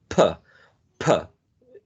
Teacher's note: Plosive implies plosion. When you say, for example, p, p, there is a burst of air, right?